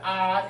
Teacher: Ah is the so-called the full open mouth, and the 开口. It's the easy vowel to be produced, and the p, pa, ma are we call it bilateral, I forgot, the 双唇 is the bilabial sound.